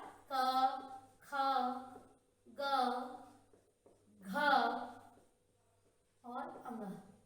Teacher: इन सब का उच्चारण स्थान कंठ है। कंठ की सहायता से बोले जाने वाले वर्ण हैं।